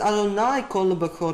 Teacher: This was pronounced as Adonai Kol Bechor with a hard Kaf